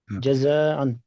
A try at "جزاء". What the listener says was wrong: یہ نا وہ والی مد، اس کو کھینچنا ہے بہت، اس کو یہ نا مد متصل، یہاں کھینچنا ہے انسان کو 5 منٹ کے برابر.